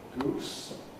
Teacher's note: long oo, which is basically a close back rounded vowel